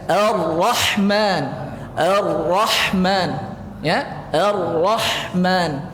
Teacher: ketika kita baca bergetar lidah itu nah sekali aja getarnya jangan banyak-banyak kali · Sekali aja getarnya Ar-Rahman, ya, Ar-Rahman. Sikit getarnya kemudian ditebalkan aja lagi. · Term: takrir